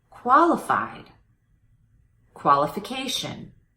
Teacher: notice how my voice goes up in pitch on the strong syllable in these two words imitate that imitate the changing pitch qualified qualification good paying